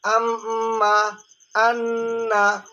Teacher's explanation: নাকের বাঁশি হইতে উচ্চারণ হচ্ছে গুন্না